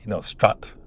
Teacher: It's really an unrounded open vowel. It's not actually the wedge vowel at all.